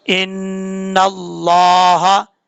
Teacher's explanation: नून मुशद्दद के ऊपर गुन्ना करेंगे। याद रखिएगा नून के ऊपर शद्द हो या मीम के ऊपर शद्द हो तो गुन्ना किया जाता है एक अलिफ की मिकदार। · लफ्ज़ अल्लाह से पहले, ये लफ्ज़ अल्लाह है जिसके ऊपर मैंने एरो रखा हुआ है, लफ्ज़ अल्लाह से पहले ज़बर हो या पेश हो तो लफ्ज़ अल्लाह पुर पढ़ा जाता है, और अगर ज़ेर हो तो बरीक पढ़ा जाता है। यहाँ पर लफ्ज़ अल्लाह से पहले ज़बर है, इसको पुर पढ़ेंगे।